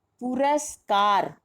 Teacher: इसी तरह से पुरस्कार, पुरस और हमारा दीर्घ स्वर कहाँ मिल रहा है? कार, तो हमारा जो बलाघात होगा वो कार पर होगा। बलाघात मतलब जिस पर बल दिया जाए।